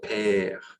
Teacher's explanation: when you say the word père, father, you are taking longer on the sound of the E. This E, you're using more seconds to share or to say the sound.